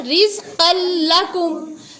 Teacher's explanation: تنوین یا نون ساکن کے بعد حروف ادغام میں سے را اور لام آئے تو ناک میں آواز نہیں جائے گی